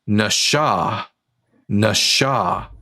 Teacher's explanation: And the purpose of the Karen is to indicate to you that the letter S here is pronounced as a sh. So it's not NASA, it's pronounced Nasha.